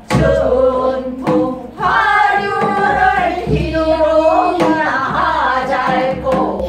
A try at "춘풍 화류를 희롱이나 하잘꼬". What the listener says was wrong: 희롱이나 희롱 이게 붙이지 말고 희롱이나 하잘꼬 이거예요.